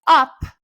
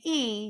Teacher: So you're going to say something like up, your jaw, because that up is a more open sound, your jaw is going to have to grade, versus if you say E, your jaw is high